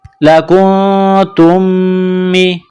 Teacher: میم ساکن کے بعد اگلی میم ہے جو مشدد ہے تو غنہ کریں گے اور تا کو اس میم کے ساتھ ملائیں گے، تا میم